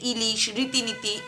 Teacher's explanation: ই হচ্ছে উচ্চ স্বর, সম্মুখ স্বর, প্রসৃত স্বর, সংবৃত স্বর, তালব্য স্বর।